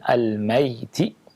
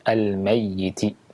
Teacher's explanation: Ada 2 qiraah di sini. Boleh dibaca dengan sukun al-mayyiti, ya, dan boleh dibaca dengan tasydid al-mayyiti, tapi sesuai dengan qiraahnya.